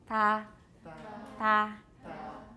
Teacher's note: keep it dental, but we're going to use the blade of the tongue. That means your tongue's going to be pushed forward a bit.